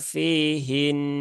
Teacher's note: nunnya tetap ditahan tiga harakat untuk menunaikan tasdidnya jadi tasdidnya jangan di jangan dibuang ya karena membuang tasdid itu